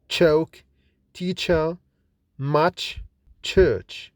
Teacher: Ch is voiceless and fortis, that is produced with more force than j. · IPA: /tʃ/